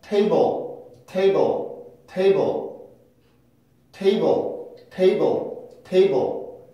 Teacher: 여기는 지금 슈아 모음이 없습니다